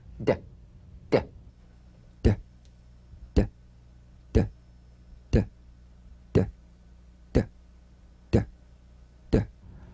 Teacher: Play this D drum beat on the springing away of the tongue from the upper gum ridge. Feel a pulsation in the tongue.